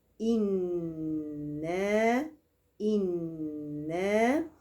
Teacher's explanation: ان عندي نون مغنونه بزمن حركتين انا انا انا انا انا انا ومد بعد ان امد الالف